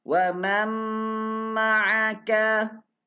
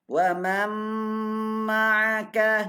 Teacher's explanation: Yang masuk mim kena dengung dah.